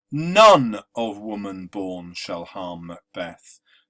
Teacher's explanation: here we have a trochaic stress where the stress is placed on the first syllable